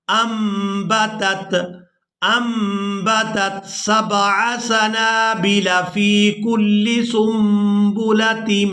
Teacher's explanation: نون ساکن ہے اور اس کے فوراً بعد با ہے، تو یہاں پر بھی ہم نے اقلاب کرنا ہے، یعنی نون کو میم کے ساتھ بدل دینا ہے